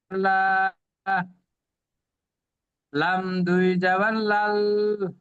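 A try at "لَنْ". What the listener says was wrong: লাম দুই জাবার লান হয়, আপনি পড়ছেন লাল। লান হবে লান। লাল নয়।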